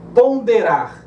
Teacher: Eu tenho um dígrafo aqui, que é o encontro do O e o N, só que vai predominar o som do O, mesmo que nasalizado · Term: dígrafo vocálico